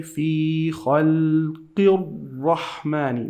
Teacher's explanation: We drop the Alif because it has Sad, and we drop the Lam because the Lam is an empty letter. Empty letters in Quran, they leave it empty like this just to know that you're not going to pronounce it. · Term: lam shamsiyya